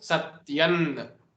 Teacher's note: the anuswara changes into the 5th letter of the row of ta, which is ta, tha, da, dha and na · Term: parasavarna sandhi